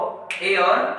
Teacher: कंठ के अंदर जब तालु जोड़ता है तो ए और ऐ बनता है, जिसको हम कंठ तालव्य भी बोल सकते हैं